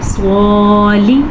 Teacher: کھڑی زبر کو ہم نے کھینچ کے پڑھا جبکہ زیر کو ہم نے کم مقدار کے ساتھ پڑھا